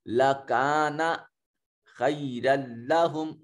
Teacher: خی میں دیکھیے یا ساکن ہے ما قبل مفتوح تو یا لین ہے, اس کو خے نہیں کہیں گے خی کہیں گے